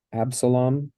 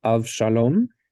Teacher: So in English, we have the B sound, and then when we take it to Hebrew, it turns into the V sound.